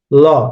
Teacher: ল আমাদের জিহ্বার যে কোনো এক সাইড দিয়ে উচ্চারণটা হচ্ছে, হয় ডানে বা কেউ বামে, এক একজন এক এক সাইডে দিয়ে করে ল। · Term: পার্শ্বিক ধ্বনি